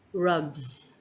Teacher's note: since the word ends with a b sound the s at the end sounds like z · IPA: /z/